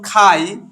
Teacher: খাই এই শব্দটির মধ্যে এই যে আই এটি হলো যৌগিক স্বরধ্বনি